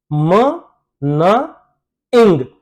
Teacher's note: एयर अगर नोज के through बाहर आती है, नेजल कैविटी के थ्रू बाहर आती है, तो उन साउंड्स को हम नेजल साउंड्स कहते हैं, जो कि इंग्लिश में सिर्फ तीन है, म, न, इंग।